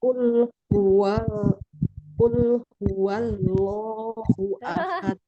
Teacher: Lam fathah la ya, bukan lam fathah lo.